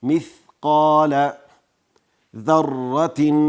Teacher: را مشدده د قوت سره ویل کیږي او را ډکه ویل کیږي. ذره تن تا لاندې دوه زیرونه دي نون تنوین او له هغې وروسته خا راغلی.